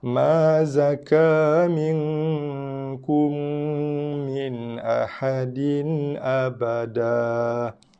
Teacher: Bibir memang kena tutup, bukan setakat tutup, kacipkan dua-dua bibir, tekankan dua-dua bibir berserta dengan dengungan. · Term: idgham syafawi